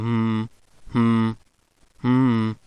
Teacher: you will notice that you are actually exhaling your air through your nose. At that time velum is lowered. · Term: nasals